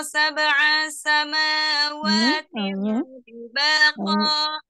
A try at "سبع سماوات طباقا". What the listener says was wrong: Hanya kepanjangan besar ya. Cepat ya.